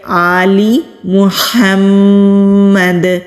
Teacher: ہم میم پر غنہ کریں گے کیونکہ میم کے اوپر تشدید ہے، اور دال پر ہم کلکلا کریں گے کیونکہ ہم دال پر وقف کر رہے ہیں